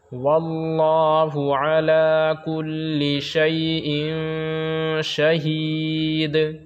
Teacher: شیء یہاں پہ اخفا ہوگا، غنہ ہوگا، اس لیے کہ 2 زیر تنوین کے بعد حروف اخفا کے 15 حرفوں میں سے شین آ رہا ہے، تو پنکھا کی طرح اس کو ہم پڑھیں گے، نون کی آواز کو ناک میں چھپا کر پڑھیں گے